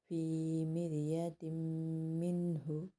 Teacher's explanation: تنوین کے بعد میم اور میم پہ تشدید ہے تو غنہ ہوگا